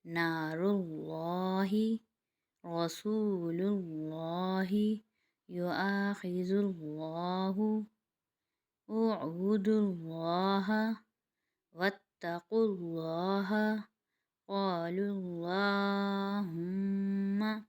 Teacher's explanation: اس کا اگلا قاعدہ ہے، اللہ یا اللہم سے پہلے پیش ہو تو اسے موٹا پڑھیں گے